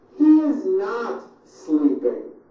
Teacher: notice how my voice comes down at the end of a sentence that is not a question